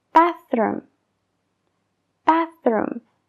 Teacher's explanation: para crear ese sonido la punta de la lengua tiene que estar entre los dientes de arriba y los de abajo y suele estar visible luego sueltas aire